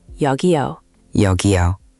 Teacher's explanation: Just make the 여 a little rounder. Your lips should be slightly forward.